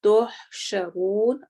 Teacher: را موٹا ہوگا اور واو لمبا ہوگا